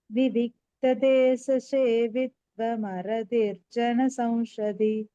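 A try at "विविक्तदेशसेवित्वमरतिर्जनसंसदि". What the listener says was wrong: இந்த ச வரும்போது மட்டும் கொஞ்சம் நீங்க சொல்லும்போது அது ஷ மாதிரி கேட்கறது. ஸோ அதை மட்டும் கொஞ்சம் பார்த்துக்கோ.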